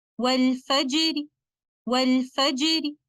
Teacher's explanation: I will recite letter Ra light with tarqiq